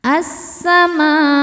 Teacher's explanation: Cara bacanya alif lam lewatin masuk langsung ke sin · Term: alif lam syamsiyah